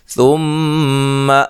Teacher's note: سا کو نرم ادا کرنا ہے، میم مشدد پہ غنہ ضروری ہے